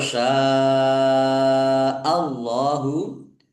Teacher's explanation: Walau sya Allahu syin fathah alif mad thobi'i. Tetapi karena bertemu dengan huruf hamzah dalam satu kata maka menjadi mad wajib muttasil. Dibaca panjang harus lima harakat. Allahnya dibaca tebal karena harakat di depannya fathah.